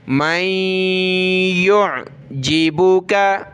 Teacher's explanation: नून को हमने नहीं पढ़ना होता, उसकी जगह पे सिर्फ हमने नाक में आवाज़ पैदा करनी है और डायरेक्ट हमने या पढ़ना है , यानी मीम के बाद हम या पढ़ेंगे और यहाँ हमने